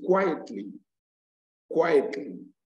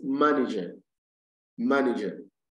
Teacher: puts the stress on the first syllable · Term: first syllable is stressed